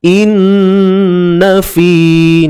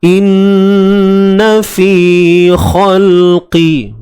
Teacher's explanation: Nun bersabdu kita kena dengungkan dengan kadar 2 harakat. Wajibul gunnah.